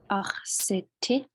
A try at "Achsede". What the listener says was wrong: but that T's got to change, right? This is the one that has that pair. Achsede. T, D, C, H, J. Achsede.